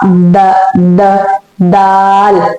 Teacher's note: to pronounce da you have to touch your tongue with the upper tooth